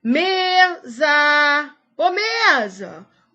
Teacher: O me eu falo mais forte do que o za. Então, é a tônica e a za é a átona. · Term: sílaba tônica